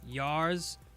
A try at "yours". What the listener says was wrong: It's yours. It's pronounced yours, not yars, okay? It's not like Tasha Yar, okay, from Star Trek. It's yours, okay?